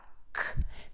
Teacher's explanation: To do this, tip of the tongue is down, back is pulled up, air puffs out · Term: k sound